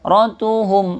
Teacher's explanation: mim sukun bertemu waw, ini namanya izhar syafawi, jelas ya. Izhar artinya jelas, syafawi bibir, jadi jelas di bibir kita.